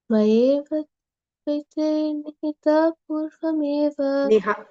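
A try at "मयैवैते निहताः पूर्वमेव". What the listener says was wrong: Nihata. Not Nihita, Nihata.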